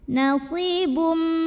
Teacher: Maka cara bacanya tanwin dhammahnya dileburkan atau dimasukkan ke mim disertai dengung. Artinya tanwin yang biasanya bunyinya N kalau ketemu mim bunyinya M, masuk ke mim langsung. Nasibum dan dengung tahan bunyi M-nya. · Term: idgham bi gunnah